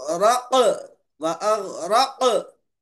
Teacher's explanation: गैन में कलकला नहीं होगा, कॉफ में कलकला होगा